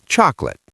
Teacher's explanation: a native speaker kills that middle vowel. It becomes a ghost. We say chocolate. Two syllables.